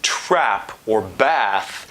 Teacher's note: I'm talking about the ash which is this lower front vowel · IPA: /æ/